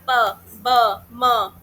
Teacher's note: तो इसमें बलेबियल वाला बलेबियल वो होते हैं बेटा जिसमें आपके दोनों लिप्स जो है होठों से दोनों होठों से जो आवाज निकलती है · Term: बाइलेबियल